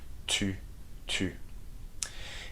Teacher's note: Tu is the U sound, so make sure you make a round with your lips, okay? And your tongue touches the back of your teeth. Tu. Il, elle are pronounced the same way whether there's an S or not.